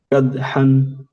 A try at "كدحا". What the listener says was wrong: کاف باریک کدحن